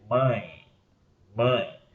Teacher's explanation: o som sai parte pela boca e parte pelo nariz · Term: ditongos nasais